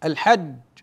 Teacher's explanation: عندما وقفت على الجيم انقطع صوت الجيم انحبس الصوت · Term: حرف شديد